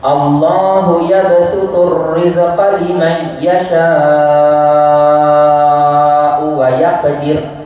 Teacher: Liman tak dengung, yasha kena 6, tak boleh 4. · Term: qiraat Imam Hamzah